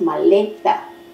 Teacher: Ya bien, palabras graves o llanas. La penúltima sílaba es tónica.